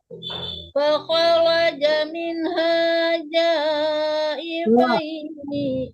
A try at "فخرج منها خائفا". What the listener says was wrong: kha bukan ja ya, khaifai.